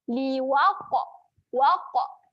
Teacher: Huruf qaf bertanda sukun kita bacakan melantun. Dan pastikan lantunan itu berbunyi tebal. Saya tuliskan kat sini tebal.